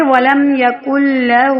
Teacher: اب دیکھیں وَلَمْ يَكُنْ لَهُ نون ساکن کے بعد شد والا کلمہ آ گیا ہے. کاف کو سیدھا لام کے ساتھ جوڑیں گے، نون کو سائلنٹ کر دیں گے. وَلَمْ يَكُنْ لَهُ ہو الف کی مقدار کے برابر کھینچ کر پڑھیں گے.